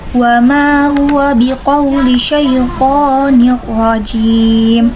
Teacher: Sedangkan ro-nya sendiri yaitu ro tafhim karena berharokat fathah, biasanya dibaca tebal. Sedangkan jim yaitu mad arid disukun karena mad tabi'i bertemu dengan huruf hijaiyah yang disukunkan karena waqaf, biasanya 2 alif 2, 4 atau 6 harokat.